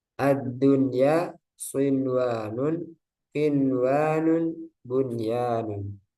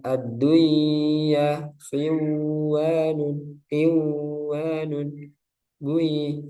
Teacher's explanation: Harus dijelaskan. Idhar. nunnya harus jelas.